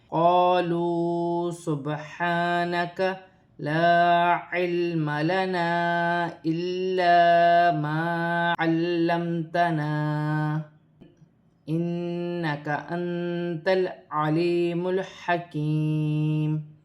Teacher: یہاں الف مدہ بھی ہے، واو مدہ بھی ہے، ایک ایک الف کی مقدار کھینچ کر پڑھا جائے گا۔